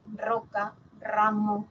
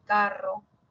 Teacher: luego está la múltiple que sería roca ramo o entre vocales carro